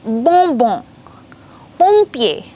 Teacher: whenever it comes ON, OM together, it will be on sound, nasal sound